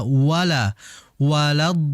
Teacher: Jadi perhatikan lam agar dibaca tipis bukan dibaca tebal.